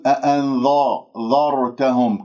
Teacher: ولا أفخم الذال بسبب الراء، راء ساكنة قبلها مفتوح تفخم الراء، فلا تفخم الذال، تقول أأنذرتهم، كأنه صارت قريبة إلى صوت الظاء. · والهاء مضمومة، أضم الشفاه وكل مضموم فلن يتم إلا بضم الشفتين ضم.